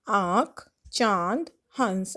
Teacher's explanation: जिस स्वर के उच्चारण में हवा नाक व मुंह दोनों से निकले उसे अनुनासिक कहते हैं